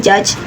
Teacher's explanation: the sound j, as in judge, is voiced, meaning the vocal strings vibrate. It is additionally shaped at the post-alveolar place and produced using the same affricate manner.